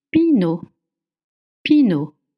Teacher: You don't pronounce the T at the end.